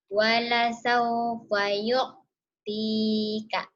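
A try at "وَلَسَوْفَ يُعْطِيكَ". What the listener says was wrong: Wala saufa hutang ain. Yu'tika kurang ngeden. Ketenggorokannya neken. Yu'tika.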